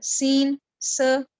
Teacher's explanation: اور اگلی جو ہم نے آج صفت پڑھی وہ تھی صفیر، یعنی ہم نے کیا کیا کہ سیٹی کی آواز نکال کر اس کو پروناؤنس کیا